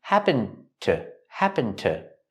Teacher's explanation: the D and happened is a stop D when you link the words